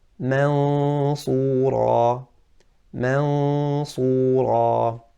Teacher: I'm not saying mansura. I'm not touching the makhraj of noon, but my mouth is ready for the sad. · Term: ikhfa